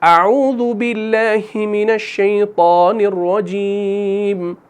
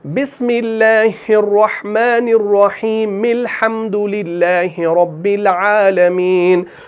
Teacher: دوسرا طریقہ، اس میں استعاذہ کے بعد پوز کرنا ہے، اعوذ باللہ من الشیطان الرجیم، پوز, اس کے بعد بسم اللہ اور نئی سورت کو ملا کر پڑھنا ہے